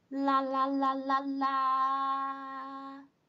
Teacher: no matter how I prolong a sound there is no variation in a pitch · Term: first one